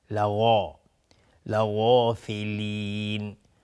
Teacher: غین از حروف استعلاست، غلیظ تلفظ میشه و الف هم تابع غین، غلیظ تلفظ میشه.